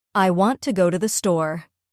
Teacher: For example, if we say, I want to go to the store, we stress want and store more than the other words